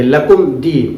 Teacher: لکم میم ساکن اظہار کریں گے اور جلدی پڑھیں گے، لکم دی، اس لیے کہ میم ساکن کے بعد دال ہے.